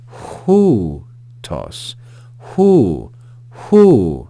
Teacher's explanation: going to add the English consonant H before this diphthong and we see a circumflex accent so the pitch is going to rise and fall on this on this diphthong on this syllable so we're going to read that as who · we're going to add the English consonant H before this diphthong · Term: rough breathing Mark